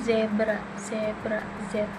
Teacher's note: Selanjutnya ada Z, bentuk mulutnya itu ujung lidah mendekati alveolar ridge, udara keluar dengan gesekan bersuara